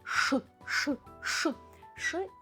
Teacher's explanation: І вимовляємо ми його твердо і дещо на навіть твердіше, ніж в українській мові. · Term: тверді шиплячі приголосні